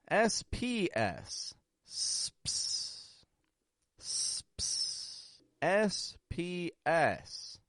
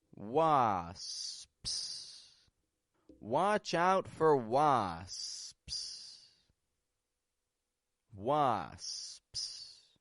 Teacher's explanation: First, making an S, making a quick P sound, and then making a second S. All about starting very slowly, letting your muscles get used to the movement, and then picking it up and going quickly.